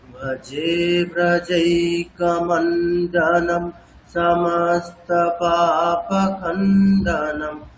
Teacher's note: প্রত্যেকটা যুক্তাক্ষরের শুরুতে আমি একটু থামছি, মানে একটু হালকা, যেটা দীর্ঘ বর্ণে ঠিক যেমনটা করা হয় অতটা দীর্ঘ হচ্ছে না, কিন্তু একটু থামা হচ্ছে